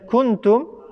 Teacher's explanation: نونەکە و تەنوینەکە لە ناو دەم و لوتماندا دەشارینەوە و دوو حرەکەش مینگەی بۆ دەکەین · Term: ئیخفا